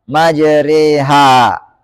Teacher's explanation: Itu huruf yang dilafalkan condong dari alif ke ya. Itu dari fathah ke kasrah. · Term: imalah